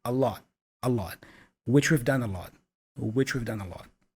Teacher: The A there, the article, is also a schwa sound, and the T for lot is not pronounced fully. It's a stop consonant again, a lot, which we've done a lot, which we've done a lot.